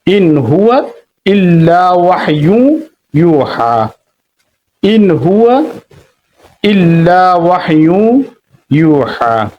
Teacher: নুন সাকিনের পরে হা আসছে, ইন হুয়া স্পষ্ট করে পড়া হয়েছে, এজাহার করে পড়া হয়েছে,